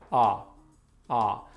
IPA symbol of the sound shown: ʌ